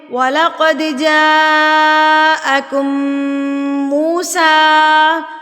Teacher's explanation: اور مد متصل کو آپ نے کتنا کھینچنا ہے؟ 4 حرکات کے برابر۔ مطلب کہ 4 انگلیوں کو بند کر لیجئے اور جتنا ہمیں 4 انگلیاں کھولنے میں ٹائم لگتا ہے نا نارمل انداز میں، اتنا ٹائم آپ نے جا کو کھینچنا ہے۔